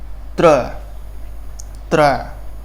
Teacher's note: त का उच्चारण हम दंत से करते हैं, त। र का उच्चारण मूर्ध से होता है, मूर्धन्य से होता है, त्र। त्र।